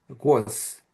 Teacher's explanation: The second syllable is gone, and then the voiced consonant, the final voiced consonant becomes voiceless.